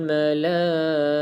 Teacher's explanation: ta dekat sini kita berhenti dia bunyi macam ha sebab ta bulat